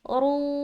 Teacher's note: را کو موٹا رکھ رہے، واو مدہ بھی کر رہے ہیں، پیش آنے کی صورتحال میں را موٹا ہوا اور واو ساکین ہے اس سے پہلے پیش ہے، تو اس لحاظ سے واو مدہ کا قاعدہ ہوا۔